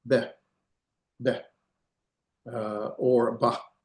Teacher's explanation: A vocal shava actually has a sound and it's going to be like a very quick a or some people will say a very quick e.